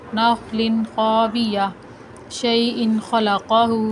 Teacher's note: کسی بھی تنوین کے بعد غنہ نہیں کیا بلکہ ظاہر کر کے تنوین کو پڑھا ہے